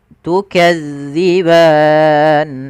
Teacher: Hati-hati di dalam melafalkan zal. Karena zal ini salah satu huruf idlaq yang dia pelafalannya di ujung lidah kita menempel dengan gigi sari